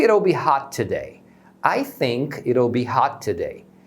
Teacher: Então esse T do it acaba soando como um R. Eles pronunciam como se fosse um R de Maria, né?